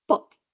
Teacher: So, for example, the word pot in many varieties of English will have aspirations, like a puff of air at the beginning, pot. But in some varieties, you don't have that aspiration. You'll have pot with no puff of air. Or the t at the end, instead of having pot with the release, you might have pot with no release. · in some varieties you don't have that aspiration you'll have pot with no with no puff of air